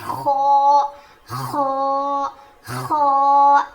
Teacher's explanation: اس کو تھوڑا موٹا پڑھیں گے, اس کی آواز تھوڑی اوپر جائے گی, اور جب ہم خو پروناؤنس کریں گے تو اس میں تھوڑی سی گاگلنگ ساؤنڈ آئے گا, یعنی کھردری آواز آئے گی, زیادہ نہیں تھوڑی سی.